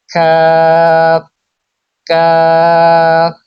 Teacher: জিহ্বার গোড়া থেকে একটু আগে বাড়িয়ে তার বরাবর উপরে তালুর সঙ্গে লাগিয়ে উচ্চারিত হয় কাফ